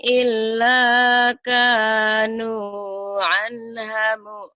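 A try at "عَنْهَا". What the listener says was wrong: anha panjang atuh. Anha ya. Anha mu'rid.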